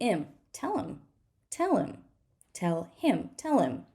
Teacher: him is going to be M right we're going to skip the H